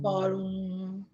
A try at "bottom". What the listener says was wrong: Nope. No, you have to make the vibration sound. Do you feel the vibration in your neck?